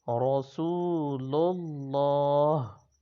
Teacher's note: لام کے ساتھ جو دوسری لام آ رہی ہے تو ان دونوں کو ملا کر موٹا پڑھیں گے. تو اس میں جلالت ہے، اللہ تعالیٰ کے نام سے پہلے حرف پر زبر یا پیش ہو تو اللہ تعالیٰ کے نام کو موٹا پڑھا جاتا ہے.